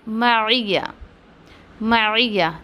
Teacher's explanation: देखिए मैं आइन को मद नहीं दे रही हूँ, आइन की कि उसकी सिफ़ात के साथ उसको अदा करने की कोशिश करी, तो आप उसको खींचे ना, मैया मैया ऐसा नहीं करना आपको, मइया, ठीक है।